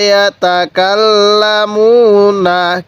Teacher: এরপরে ইয়া জবর ইয়া, তা জবর তা, ইয়া তা কাপ লাগবে এই লামের সাথে, কাল লাম জবর লা, ইয়া তা কাল্লা, মিম ওয়াও পেশ মু, এখানে এক আলিফ টান দিব কারণ পেশের পরে ওয়াও সাকিন এক আলিফ টানতে হবে।